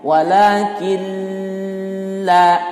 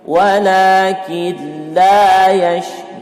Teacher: Nun mati bertemu dengan lam, ya, maka tidak boleh ditahan 2 harokat.